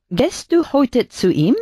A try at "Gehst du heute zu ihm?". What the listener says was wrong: Es una E más larga, ¿vale? Gehst.